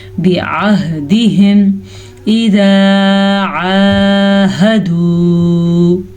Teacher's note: عین کے مخرج کو واضح کر کے پڑھنا ہے. ہا، دونوں ہا کا دھیان رکھنا ہے کہ یہ چھاتی کے اندر سے نکلے، حلق کے آخری حصے سے. بعہدہم اذا عاہدوا، وقف کرنا ٹھیک ہے تو ہم یہاں پہ وقف کر رہے ہیں.